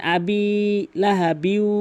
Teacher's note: আবি এক আলিফ টানবেন এবং লাহা বিউ গুন্না অবশ্যই করতে হবে